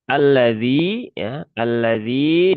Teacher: ya sukun setelah kasroh maka dia dibaca panjang dua rokat ya, mat asli atau mat tabi'i